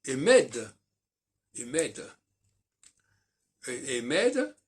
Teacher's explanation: avec un E qui fait prononcer le D au féminin, et au masculin, le D ne se prononce pas.